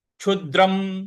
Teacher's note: जो अनुस्वार है उसका उच्चारण हमें म ले आना है